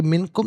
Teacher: ناک میں آواز لے جا کر گنگنانا، اسے اخفا کہتے ہیں